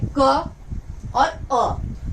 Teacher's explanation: जैसे क में 2 ध्वनियां सुनाई पड़ती हैं, क और अ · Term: व्यंजन